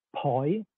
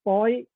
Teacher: they have different tones because po begins with P aspirated Bo has an initial consonant which is unaspirated